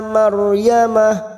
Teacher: ra sukun yang sebelumnya fathah kita baca tafkhim atau tebal